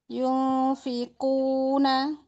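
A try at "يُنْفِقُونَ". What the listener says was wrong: Kurang lama ikhfanya.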